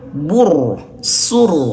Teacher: huruf ro yang sukun sebelumnya ada huruf yang berharakat domah bur sur maka tebal